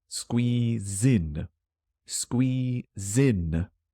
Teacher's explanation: It's like squee, zin. The last letter, Z, the last consonant, is joining the vowel in.